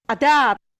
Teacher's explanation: you have a slightly positive VOT, so you have a tiny bit of aspiration after the stop